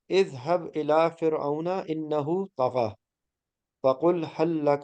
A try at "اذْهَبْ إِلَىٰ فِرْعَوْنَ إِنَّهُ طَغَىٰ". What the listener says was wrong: الى فرعون انه طغى، جہاں پہ کھڑا زبر ہے اس کو تھوڑا سا کھینچنا ہے ایک الف.